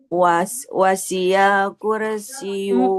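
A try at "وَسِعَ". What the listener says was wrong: Bukan wasia, wasi'a. Huruf ain bukan huruf ya. Wasi'a kursi.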